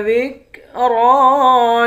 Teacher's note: لام کے بعد بھی الف ہے، اس کو بھی ایک الف کے مقدار کھینچ کر پڑھیں گے۔ را کو موٹا پڑھیں گے، را کے اوپر کھڑا زبر ہے، اس کو بھی ایک الف کے مقدار کھینچ کر پڑھیں گے